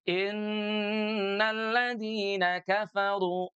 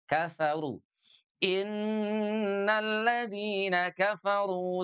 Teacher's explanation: huruf fa-nya diucapkan dengan cara menyentuh bibir bawah kita dengan gigi seri atas